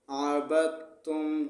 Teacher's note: دال کو نہیں پڑھا جائے گا، دال کے آگے والے حرف پر یعنی تا پر شد ہے تو با کو شد تا کے ساتھ ملا کر سختی کے ساتھ پڑھیں گے۔